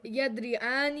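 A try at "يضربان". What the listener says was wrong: Yadribani. Don't drop the last letter. The ba is still there. Yadribani.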